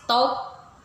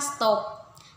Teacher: Kata bahasa Inggris top diucapkan top dengan T apikodental, tetapi setelah mendapatkan S laminopalatal pada stop, kata tersebut diucapkan stop. Jadi top tadi palatal menjadi ucapannya menjadi stop.